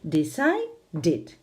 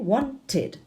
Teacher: los que ya tienen ese sonido t o d al final, pues entonces hay que añadir una sílaba a la palabra id, ¿no? Decide es el infinitivo, si añado ed, decided, ya tiene 3 sílabas.